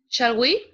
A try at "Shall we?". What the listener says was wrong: Acuérdate que es pregunta. Shall we?